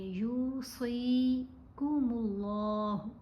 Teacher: صاد کو بھی لمبا کریں گے، زیر کے ساتھ یا ساکن ہے، یہ بھی حرف مدہ ہے۔ صاد کو موٹا بھی پڑھیں گے، یوصیکم اللہ، اللہ کی لام کو بھی موٹا پڑھا جائے گا۔